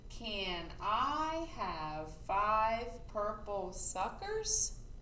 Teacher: see if we hear our voice go up at the end when we ask the question